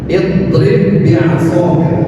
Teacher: Namanya idgham mutamathilin. Dua hurufnya sama dengan cara memasukkan ba yang pertama yang sukun kepada ba yang kedua. Jadi di sini tasydid.